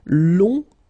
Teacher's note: remember you don't pronounce the final G, will become longue.